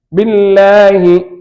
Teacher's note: இந்த அல்லாஹ் என்ற சொல் முன்னால கசர் பெற்றிருப்பதால் தர்கீக்காக சொல்ல வேண்டும். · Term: லஃப்துல் ஜலாலா தர்கீக்